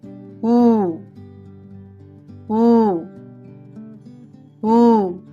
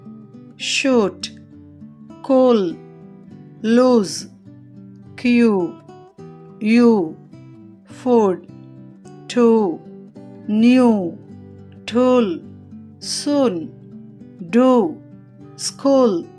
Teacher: దీనిని పలికేటప్పుడు పెదాలు గుండ్రంగా ఉండి నాలుక నోటిపై భాగానికి దగ్గరగా వస్తుంది. వోకల్ ట్రాక్ట్ యొక్క వెనుక భాగంలో వ్యక్తీకరించబడుతుంది.